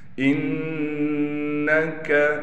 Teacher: نون پر تشدید ہونے کی وجہ سے نون پر غنہ کیا جائے گا